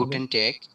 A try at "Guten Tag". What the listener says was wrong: গুটেন টাগ, ট্যাগ না টাগ, হ্যাঁ?